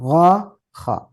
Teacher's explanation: tenggorokan bagian atas ya atau umumnya dalam tajwiid ee disebut adnal halq